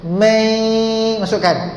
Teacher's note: Masa nun kosong bertemu dengan ya tu, masukkan kepada ya sikit, masukkan 50% je. May, dan dengung ada.